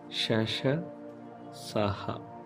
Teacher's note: ఊది పలుకబడుతున్నాయి కావున వీటిని ఊష్మాలు అంటాం. ఊపిరితిత్తుల నుండి వచ్చే ప్రవాహ స్థానం నిరోధన లేకుండా స్థాన కరణంల నిరోధాల వల్ల సంకుచిత అవకాశము ద్వారా ఒరవడి కొన్ని రావడం వల్ల ఏర్పడిన ధ్వనులను ఊష్మాలు అంటాం.